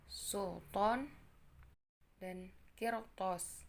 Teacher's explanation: melafalkan bunyi to yang bersifat tertutup seperti melafalkan bunyi T yang tipis